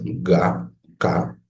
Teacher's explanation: van a darse cuenta cómo su lengua en la parte posterior está chocando con el paladar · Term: paladiales